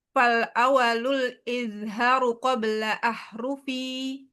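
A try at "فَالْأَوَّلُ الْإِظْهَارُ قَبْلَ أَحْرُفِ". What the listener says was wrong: Fal awwalul, wanya ada tasydidnya. Tanya panjang. Fal awwalul izharu qabla ahrufi.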